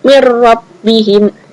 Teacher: langsung dimasukkan tanpa ada dengung